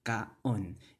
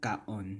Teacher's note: Because kaon itself, if you just pronounce it in one word with two vowels, there's a glottal stop between the two vowels.